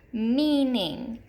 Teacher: syllable the first syllable with EA our example here is meaning you can hear that long e in that first syllable